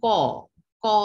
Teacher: তাহলে স্বরধ্বনি কিন্তু নিজে নিজে উচ্চারিত হতে পারে, ওর কারো সাহায্য দরকার নেই, কিন্তু ব্যঞ্জন ধ্বনি স্বরধ্বনির সাহায্য ছাড়া উচ্চারিত হতে পারে না। যেমন ক, ক উচ্চারণ করলে আমরা কর সাথে কি আসছে অ, ক যোগ অ